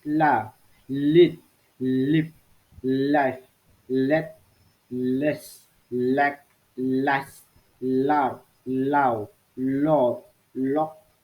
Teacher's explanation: Voice alveolar lateral sounds